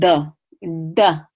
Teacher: letter duh duh if you curl your tongue back duh and say your D against the hard palate instead of how we say D in English with our tongue kind of forward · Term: retroflex